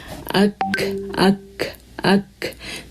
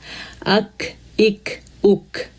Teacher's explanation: اک اک اک، دیکھیں ہارڈ پائلٹ پہ ٹچ ہو رہی ہے زبان، زبان کی جڑ اٹھ رہی ہے اور اوپر ٹچ ہو رہی ہے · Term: کاف